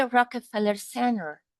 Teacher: the omission of the T is fairly common